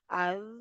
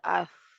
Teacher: از میں کیا ہو رہا ہے، جہر ہو رہا ہے، اف میں کیا ہو رہا ہے، ہمس، ہمس ہو رہا ہے